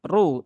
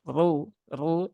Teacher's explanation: maka di dia juga dibaca dengan tebal ya Ru bukan ru Nah kalau ru itu tipis kalau ru ru itu dia tebal